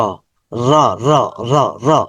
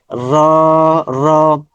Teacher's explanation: র এর মাখরাজ হচ্ছে উপরের দাঁতের গোড়ার মাড়িতে জিহ্বার প্রান্তভাগ স্পর্শ করুন। র, জিহ্বার প্রান্তভাগ।